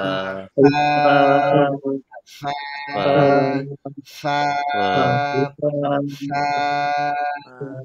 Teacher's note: ফায়ের মাখরাজটা আমরা দেখেছি যে উপরের দাঁত উপরে। নিচে ঠোঁটের পেটের মধ্যে স্পর্শ করবে এবং ভিতর থেকে বাতাস বের হবে পর্যাপ্ত পরিমাণ